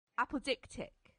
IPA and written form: ˌæpəˈdɪktɪk (apodictic)